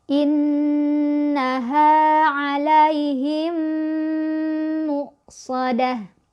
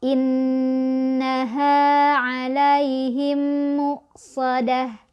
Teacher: Jadi mim ketemu mimnya, didengungkan dulu, ditahan 2 ketukan ya. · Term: idgham mimi